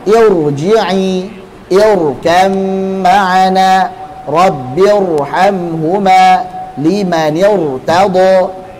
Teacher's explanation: Ra sukun sebelumnya hamzah wasal. Ditebalkan.